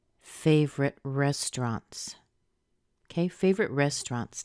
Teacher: Rest is the strongest part.